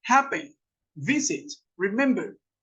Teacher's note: la acentuación no está al final, sino que está o en la mitad o está al principio.